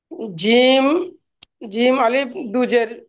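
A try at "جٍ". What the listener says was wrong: আলিফটা বলতে মানা করেছি, সিরেফ জিম দুজের জিন।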